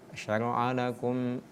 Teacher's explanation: Kalau mim yang pertama, mim sukun itu dibaca dengung dia. Sedangkan yang ini dibaca izhar.